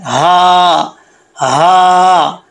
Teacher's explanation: हु हम्मा, और इसी तरीके से लास्ट आयत में ये इस चीज़ का आपने ख्याल रखना है कि ये जो हा है ये मोटा है, दो आँखों वाला जो आपको नज़र आ रहा है ये मोटा हा है, इसको सीने से पढ़ेंगे, हा हा, इसका ताल्लुक सीने से है।